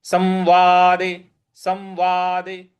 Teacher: स के ऊपर जो अनुस्वार है उसका उच्चारण हमें म के हिसाब से ले आना है।